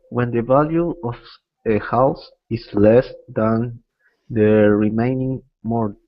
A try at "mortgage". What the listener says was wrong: Mortgage. remember in the pronunciation of this, the T is silent, so we say mortgage. Yeah, no T.